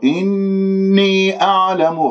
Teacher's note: إني أعلم غلط، هذا نبر، إني أعلم، الحرف المد في إني الياء، والهمزة في أعلم، راح يكون عندي مد جائز منفصل في كلمتين